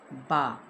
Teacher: बा बंद होंठों के खुश्क हिस्से से।